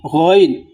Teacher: গইন অনেকে গাইন বলে, গাইন নয়, গইন। এটা হলো হলকের শেষ অর্থাৎ উপরিভাগ।